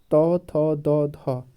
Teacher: ये कैसे बोले जाते हैं ये दंत से बोले जाते हैं